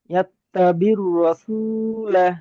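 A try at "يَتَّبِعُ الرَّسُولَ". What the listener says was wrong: বীর নয়, ইয়াত্তাবিউর, আইন র পেশ উর।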